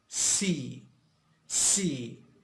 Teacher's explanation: so here in the ear it goes through the t and gives us this hissing sound so it is of course voiceless